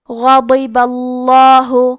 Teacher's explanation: حرف البا پہ زبر ہے لہذا لفظ الجلالہ کے لام کا حکم ہے تفخیم تو ہم حرف اللام کو موٹی آواز میں پڑھیں گے. غضب اللہ.